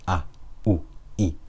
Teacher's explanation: the amount of time it takes to pronounce one of these, A, U, I, is 1 haraka. We usually measure it using our fingers.